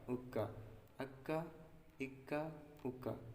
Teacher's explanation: یہ کاف زبان کی جڑ اور تالو کے سخت حصے سے ادا ہوتی ہے